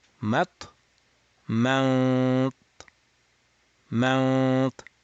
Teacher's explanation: To go to the makhraj of ta, mat, mat, and while keeping your tongue at the ta, open the nasal cavity and let the air go. So you have basically effectively nasalized. · As you can notice that my ikhfa, my nasal sound is sounding rounded. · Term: Nasalized ta